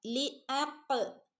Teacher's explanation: ഖാഫിന് full സുക്കൂന് കൊടുക്കുക കേട്ടോ. കാരണം ഖാഫ് കൽക്കലയുടെ ലെറ്ററാണ്, അതുകൊണ്ട് തന്നെ ഖാഫിന് അവിടെ ഫുള്ള് സുക്കൂന് കൊടുക്കണം.